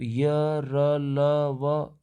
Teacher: य र ल व के उच्चारण में आप देखिए तो गला थोड़ा खुलता है, इसलिए इसको ईषद विवृत कहा जाता है।